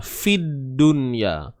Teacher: Tidak ada bunyi lam di sini. Tak ada bunyi dah. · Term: alif lam syamsiyah